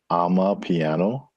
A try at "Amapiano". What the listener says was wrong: Amapiano. One word, Amapiano. Not I'm a piano, but Ama.